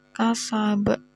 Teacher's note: ini namanya qalqalah kubra. Karena ada huruf qalqalah yang matinya mendatang disebabkan dibaca waqaf